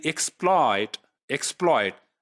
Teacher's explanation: this oil diphthong is on the stressed syllable it is taking place in the stressed syllable